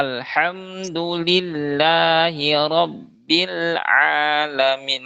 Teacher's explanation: a juga sering kepanjangan tuh, padahal dia hanya mad asli saja, mad thobi'i. Jadi, jangan terlalu dipanjangkan. Termasuk tadi alhamdulillah, lanya biasanya terlalu panjang tuh.